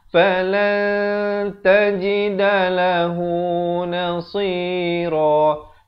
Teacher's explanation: Tapi bila datang ta jadi la, bunyinya samar saja. Kita dengar nak kata nun pun tidak, ta pun tidak. Dia di tengah-tengah. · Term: ikhfa hakiki